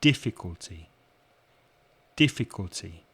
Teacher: difficulty has four syllables and you stress the first syllable so the first syllable is stronger than the other three